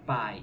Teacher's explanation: primeiro uma vogal e depois uma semivogal da palavra pai e nós temos aqui uma vogal que ela é forte e uma semivogal que ela é fraca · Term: ditongo decrescente